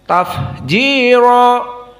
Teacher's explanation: Perhatikan fa di sini dalam keadaan hams.